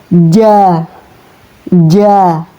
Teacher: Huruf jim ini ya keluar dari tengah-tengah lidah yang bersentuhan dengan langit-langit mulut. Jadi cara mengucapkannya japatnya dari bagian tengah lidah ketika lidah menyentuh langit-langit mulut bagian atas.